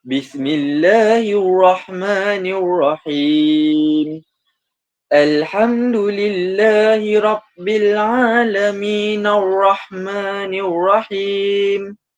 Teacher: Kita lihat tak berhenti pada perkataan alamin. Jadi min tu kita baca secara 2 harakat sahaja.